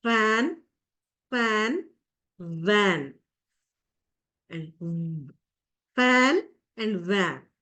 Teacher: is connected to teeth so lip and teeth all right so sounds produced by placing the lower lip against the Upper Front Teeth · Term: Leo Dental, labiodental sounds